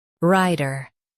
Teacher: ri t ri-ta ri t ri-ta Stress the first syllable, ri, and keep ter light.